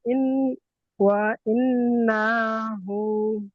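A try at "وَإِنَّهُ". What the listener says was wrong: না টান হচ্ছে কেন? ওয়া ইন্নাহু, শুধু হু টান দেন নাই, হু এখানে উল্টো পেশ যেখানে আছে সেখানে টান দিতে হবে, জবরে টান হচ্ছে কেন?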